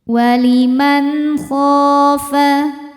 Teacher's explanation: kho hukumnya adalah mad tabi'i dhahiri sebab ada alif didahului harokat fathah. Cara bacanya dipanjangkan 2 harokat.